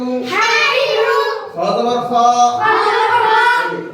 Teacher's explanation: খ বলতে মুখ গোল করা যাবে না